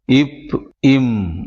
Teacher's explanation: அடுத்ததாக இப், இம் என்னும் எழுத்துக்கள் மேல் உதடும் கீழ் உதடும் பொருந்துவதால் பிறக்கின்றன